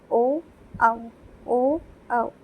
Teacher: इसमें कंठ और ओंठ दोनों के टच करते हुए जिन वर्णों का उच्चारण होता है उनको हम लोग कंठोष्ठ स्वर कहते हैं